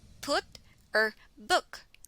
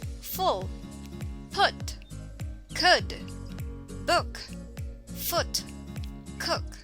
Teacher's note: the short u sound is a near closed near back rounded vowel as in put or book the short u sound is considered